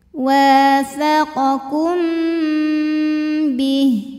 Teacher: mim sukun menghadapi huruf ba, maka mim sukun dibaca dengung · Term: ikhfa syafawi